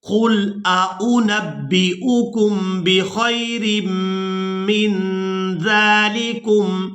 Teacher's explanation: یہاں پر دو حمزہ ایک ہی جگہ پر جمع ہو گئے ہیں تو ہم دونوں کو ظاہر کر کے ادا کریں گے